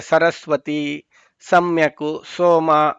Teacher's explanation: ಅಂತ ಉತ್ತರ ಅಂದ್ರೆ ಸರಸ್ವತಿ ಸಮ್ಯಕು ಸೋಮ ಇದೆಲ್ಲ ಹೇಳುವಾಗ ಹಲ್ಲಿನ ಹತ್ರ ಬರುತ್ತೆ ಇದು ಸ ಪೂರ್ತಿ ಹಲ್ಲಿಗೆ ತಾಕಲ್ಲ ಸ ಅಂತ ಅಂತ ಆ ಹಲ್ಲು ಹತ್ರ ಬಂದು ಅಲ್ಲಿ ಗಾಳಿ ಒಂದು ಸ್ವಲ್ಪ ಪಂಪ್ ಅಪ್ ಆಗುತ್ತೆ ಅದು ಸ ಅಂತ ಅಂತ ಹೇಳಿ ಇದಕ್ಕೆ ದಂತ್ಯ ಅಂತಾರೆ ಹಲ್ಲಿನ ಇದು ನೋಡಿ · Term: ದಂತ್ಯಗಳು